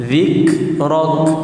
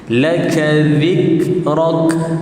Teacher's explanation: 2 kali hembusan. Zik 1, kemudian rak 1.